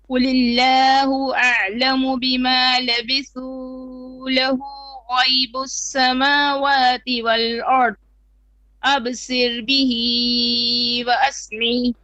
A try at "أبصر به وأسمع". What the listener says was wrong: Okay, it's too long on the long vowels. أبصر به, 2 beats only. وأسمع.